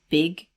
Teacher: the word big, which has a high front vowel